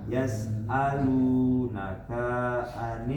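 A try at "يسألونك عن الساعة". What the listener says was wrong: K-nya pendek. enggak pendek.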